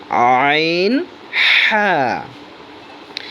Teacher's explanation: দুই নাম্বার মাখরাজ হলকের মধ্যখান হইতে